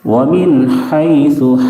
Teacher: ہا کو درمیانی حلق سے بالکل صاف ہوا کی طرح ادا کریں، کھڑکھڑاہٹ جیسی آواز بالکل نہیں نکلے گی۔ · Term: اظہار حلقی